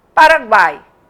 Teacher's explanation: e aí eu tenho uma semivogal uma vogal e uma semivogal a vogal fica no meio e de cada lado dela uma semivogal então a palavra Paraguai o u é pronunciado fraquinho o o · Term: tritongo